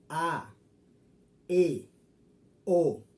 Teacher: Tenemos 3 vocales abiertas, es decir, para poder hacer el sonido, tú tienes que abrir la boca. A, E, O. Si ustedes ven, para poder pronunciar estas vocales, la boca tiene que ir abierta.